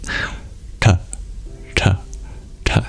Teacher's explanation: instead of touching your tongue to your teeth to make the sound T you curl it back and you flick the bottom of the tip of your tongue · you curl it back and you flick the bottom of the tip of your tongue against your hard pallet